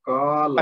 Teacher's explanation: لام کو لمبا نہیں کریں